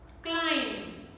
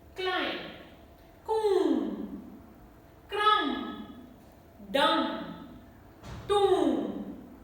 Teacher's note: I end my pronunciation with M sound, not B sound.